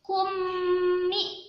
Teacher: kummi dibaca dengung yang lama juga